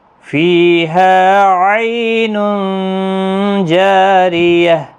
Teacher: لا تسمع فیہا لاغیہ فیہا عین جاریہ، فیہا فی یا مدہ ہے، ہا الف مدہ ہے، عی یالین ہے، اور تنوین کے بعد حروف اقفا کا جیم آیا ہے، یہاں پر اخفاء حقیقی ہوگا